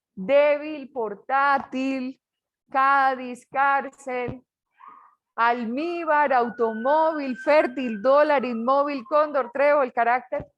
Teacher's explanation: ¿Dónde llevan la sílaba tónica? En la penúltima.